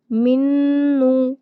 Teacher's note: نون مشدد ہے یہاں پر بھی غنہ کیا جاتا ہے